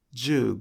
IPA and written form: juugo (15)